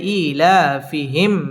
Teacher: মিম সাকিন ইজহারে খাস গুন্না ছাড়া পড়তে হবে